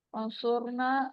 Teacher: فانصرنا، یہاں بھی نون ساکن ہے، اخفا ہوگا، یعنی آواز کو ہم چھپائیں گے، آگے حروف ہلکی نہیں ہے. فانصرنا، را ساکن ہے، پیچھے والے حرف پیش ہے، را موٹا ہوگا، الف مد ہو رہی ہے.